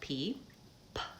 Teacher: so I stopped the air and then release it like pee I have to stop the air and then it releases in a burst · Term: stopped consonant